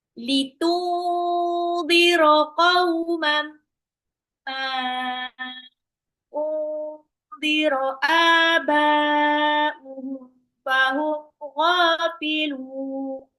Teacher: kauman ini ada tanwin ketemu mim, maka langsung dilebur dan ditahan 2 sampai 3 harokat